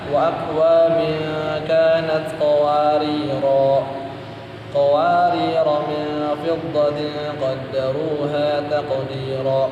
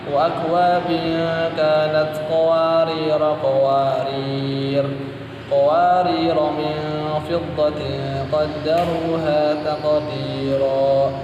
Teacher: qawarir itu apabila dibaca waqaf maka panjangnya 2 harokat